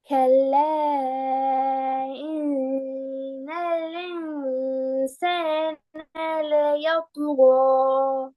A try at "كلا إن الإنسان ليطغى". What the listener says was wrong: அலிஃப்ட உச்சரிப்ப சரியா எடுத்து ஓதுங்க.